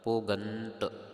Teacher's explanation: ਦਦੇ ਦੀ ਆਵਾਜ਼ ਨਹੀਂ ਕਰਨੀ ਤਤੇ ਦੀ ਆਵਾਜ਼ ਦੇ ਨਾਲ ਪਾਠ ਭਬ ਨੂੰ ਹੋੜਾ ਲਗਾ ਕਰਕੇ ਗਗ ਨੂੰ ਟਿੱਪੀ ਲਗਾ ਕਰਕੇ ਤਤਾ